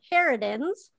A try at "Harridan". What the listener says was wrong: Harridan, just one Harridan.